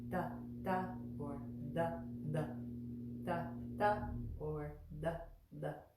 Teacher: all of the things that look like T's and D's in these words are all with the tongue right behind the front teeth, drawing back